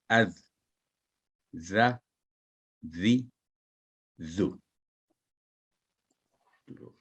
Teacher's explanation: जबान की नोक को मामूली सा बाहर निकालकर ऊपर वाले दांतों के निचले किनारे से लगाने से यह हरफ अदा होता है। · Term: जाल